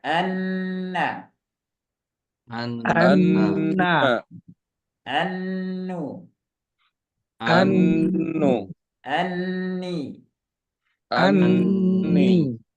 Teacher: tiga harakat Kenapa tiga harakat pertama huruf nunnya kemudian E tasdidnya gunah tasdidnya itu dua sejajar dengan dua harakat jadi lama agak lama kita baca